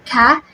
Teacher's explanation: when we produce calf there is a slight gush of air or breath that is produced along with it